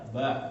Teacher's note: Karena ba ini bukan termasuk huruf khisyum, bukan yang keluar dari rongga hidung.